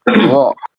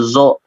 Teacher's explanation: Khusus huruf lo karena dia huruf tebal ya, karena dia huruf tebal berarti harus diangkat daripada pangkal lisan kita.